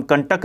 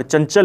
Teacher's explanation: अनुस्वार के उच्चारण में हमारे मुंह और नाक दोनों का प्रयोग होता है, दोनों से ध्वनियां निकलती है, दोनों से हवा निकलती है, लेकिन नाक से ज्यादा और मुंह से कम निकलती है।